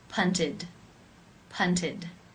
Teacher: where the e d is pronounced as the I as in sit with the D sound